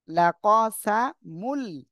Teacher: তানবিনের পর ইদগামে বেলা গুন্নার অক্ষর লাম আসছে, গুন্না ছাড়া মিলিয়ে পড়বেন।